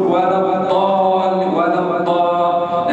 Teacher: كأنه يخرج حرف الدال مفخم